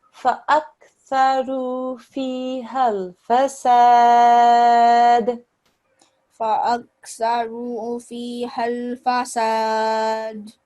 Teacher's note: we can actually stretch out the sad for about 5 seconds.